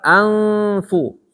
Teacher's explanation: itu ketemu fa. Fa-nya tipis, berarti datar, anfu.